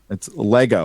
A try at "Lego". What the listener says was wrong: Not Lego. There's no L-A-Y-G-O. L-E-G. Leg-O.